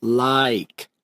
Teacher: like actually has the two vowel sounds a and e and you align them together